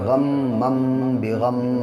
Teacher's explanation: تنوین کے بعد یہ با آیا ہے جس کی وجہ سے یہ چھوٹا سا میم پیدا ہوا ہے